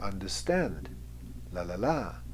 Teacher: instead of strong weak weak it's weak weak strong weak weak strong you can see the grouping here understand lalala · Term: anapestic rhythm